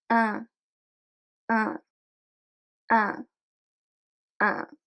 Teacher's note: And then we are going to have the same process of letting the air go through the nose while our tongue is flat in the mouth and doesn't touch the roof of our mouth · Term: nasal vowel